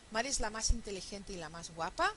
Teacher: estamos juntando la i con la e porque la i es atona